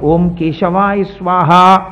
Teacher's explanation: క పలకాలంటే ఎక్కడ పలకాలి కంఠం దగ్గర పలకాలి